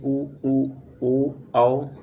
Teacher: वृत्ताकार स्वर ऐसे स्वर हैं जिनके उच्चारण में होठों का आकार गोल हो जाता है